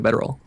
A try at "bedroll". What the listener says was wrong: Do you keep saying bedroll as 3 syllables? Because that's what it keeps sounding like. It sounds like you keep saying bedroll.